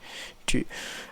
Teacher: this is the sound of a front closed rounded